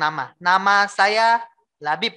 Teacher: di nama tidak akan jelas karena suaranya keluarnya lewat hidung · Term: dengung